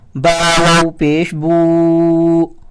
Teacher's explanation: same ایسے ہی واو کے اوپر کوئی علامت نہیں ہے تو ہم پھر با کو جب واو کے ساتھ ملائیں گے تو با کو کھینچ کر پڑھیں گے